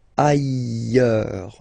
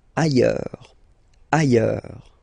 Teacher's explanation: final S not pronounced, and then you've got this y sound